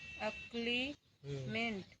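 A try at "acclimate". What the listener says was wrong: मेंट ना है मेट, अक्लाइमेट, में ना है म हो।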